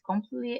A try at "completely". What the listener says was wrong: Very good. Well done.